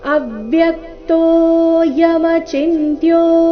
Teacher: ಅ ಮತ್ತೆ ಯ ಮೇಲೆ ಆಘಾತ